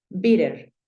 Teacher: Es usual que cuando tú ves palabras que tengan doble T, es usual que esa T, esa doble T, se convierta en un sonido de R, en una R.